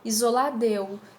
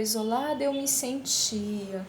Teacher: Observa bem que o A quase nem é pronunciado, vou direto para o E ali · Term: elisão